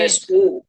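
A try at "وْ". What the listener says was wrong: জি না, ওয়াও পেশ নাই ওখানে, ওয়াও এর উপরে সাকিন আছে। আপনি ক্লাস রেকর্ড ভিডিওটা দেখে নেবেন, ওয়াও সাকিন আছে, ঠিক আছে, ওখানে বুঝিয়ে দিয়েছি। তো ক্লাস রেকর্ড ভিডিও পাঠাবো, আপনি দেখে নেবেন, ওটা আছে ওয়াও সাকিন।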